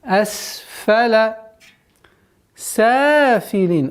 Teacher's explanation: Удержание на син немножко, так как свистящий звук.